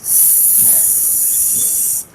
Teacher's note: The blade of the tongue goes up and touches the teeth ridge, and you're releasing the air.